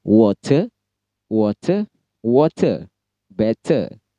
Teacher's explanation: Seperti dalam kata water juga Britishnya T-nya jelas, water, R-nya lemah, water, water, water, better. Nah, R-nya lemah, T-nya jelas, British.